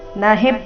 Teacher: ನ ಹಿ ಎರಡು ರಸ್ವ ಹಿ ಮೇಲೆ ಸುಂದರವಾದ ಆಘಾತ